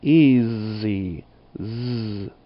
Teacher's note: the S doesn't always sound like the hiss of a snake. In easy, it sounds like a Z. Easy. Z.